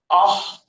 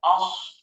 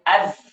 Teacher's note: جیسے مثال کے طور پر آپ دیکھیں کہ آپ کے سامنے حرف خاء سب سے پہلے آیا ہے رخاوت کے اندر، اخ، اب اس کے اندر آواز دراز ہو رہی ہے، اخ، خاء کی آواز لمبی ہو رہی ہے، آواز میں درازی آ رہی ہے۔ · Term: صفت رخاوت